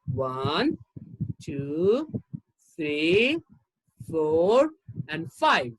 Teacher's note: when you count the last one has the falling tone and the remaining has the rising tone